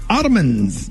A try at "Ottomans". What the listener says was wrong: Ottomans. It's Ottoman. It's Ottoman. You just kind of let it flow. You do it Ottoman. You're breaking them down in 3 syllables.